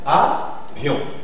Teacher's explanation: les deux voyelles forment un seul groupe vocalique et dans ce cas on dit que le i fonctionne comme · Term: le Yod